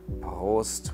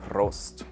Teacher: So that's a little difficult to pronounce because of the R with which many might have difficulties. Prost, with the rolled R in the throat, or if you're more in Bavaria, with the rolled tongue.